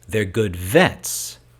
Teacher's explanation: This is labial dental. Lip and teeth working together.